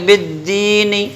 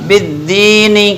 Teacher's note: پھر بالدین میں با پہ زیر ہے, اسے بغیر کھینچے پڑھیں گے. پھر دال پہ تشدید ہے تو دال میں ڈبل ادا کریں گے دال کو, اور پھر دال پہ زیر ہے, اس کے بعد یا ہے تو یا سے پہلے اگر زیر ہو تو پھر وہ یا مدہ, جیسے پیچھے بتایا تھا.